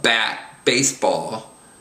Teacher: in English the B is quite explosive